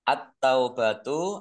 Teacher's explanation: alif lam syamsiah karena tidak dibaca langsung masuk ke huruf berikutnya yaitu ta